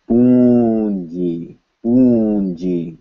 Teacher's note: in addition to the nasalized vowel, you will hear a short N sound.